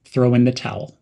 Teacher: link throw and in almost as one word throw in and emphasize the word towel